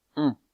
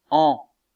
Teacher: vous sentez que la voyelle on est un peu plus fermée, un peu moins ouverte que la voyelle an.